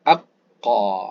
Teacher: Ketika menyebut dia, lidah, pangkal lidah, kena sedikit pada nak tekak lah. Aqqa. Jadi dia lebih kepada nak tenggelam ke dalam. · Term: huruf qaf